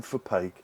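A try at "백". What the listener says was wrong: Well, when we spoke to him in person, he said that it's actually pronounced like a B, bake.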